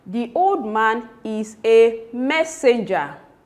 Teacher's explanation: The emphatic stress of course is on messenger. Why? Because it is written in capital letter and hence the speaker is laying emphasis on that particular word.